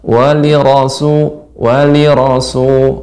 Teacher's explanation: rnya fathah maka ro tetap tebal